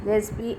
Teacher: And in the z sound, obviously, continuously, if we say zzz, there'll be a buzzing sound that's coming out, and that becomes voiced. So in the z sound, that is the buzzing sound, the vocal cords are not wide apart, they are loosely together, and the glottis is also closed.